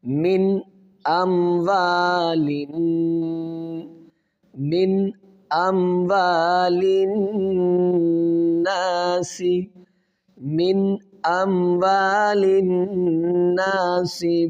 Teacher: نون ساکن کے بعد حروف حلقی میں حمزہ ہے تو یہاں پر غنہ نہیں کیا جائے گا نون پر، بلکہ یہاں پر اظہار کیا جائے گا